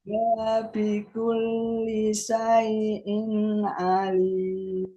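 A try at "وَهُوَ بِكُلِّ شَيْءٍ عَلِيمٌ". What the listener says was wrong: masih kepanjangan di wahwa. Wahwa bikulli. Itu ya Bu perpindahan dari kata satu ke kata yang berikutnya. Nah, dilihat hurufnya pendek nopo panjang. Kalau pendek ya pendek gitu. Terus pindah ke sebelahnya ya. Meskipun ada spasi ya Bu, ini kan ada spasi ya, tapi kan hurufnya ini pendek ya.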